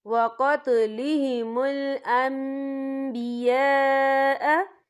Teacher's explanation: نون ساکن کے بعد جو ہے با آ رہا ہے تو یہاں پر اقلاب ہوگا یعنی تبدیلی ہوگی، تو ہم یہاں میم کا تلفظ بھی کریں گے اور ہم یہاں غنہ بھی کریں گے۔